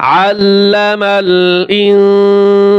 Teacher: আইন গলার ভিতরে চাপিয়ে বলতে হবে